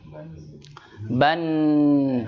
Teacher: Keluarlah dia dari khoisum, pangkal hidung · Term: Gunnah